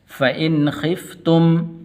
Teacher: یہاں پر غنہ نہیں کریں گے اس لیے کہ آگے خا یہ حروف حلقی میں سے ہے